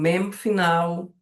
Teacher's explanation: porque a gente faz com os dois lábios a pronúncia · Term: bilabi